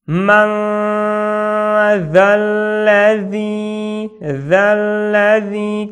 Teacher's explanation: Кончик языка выходит. И так говоришь букву З между зубов. · Тут буква ذаль. Кончик языка выходит. Это глухая буква З.